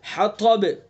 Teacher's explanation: طا کی صفت استعلا ہے، منہ بھر کے پڑھیں گے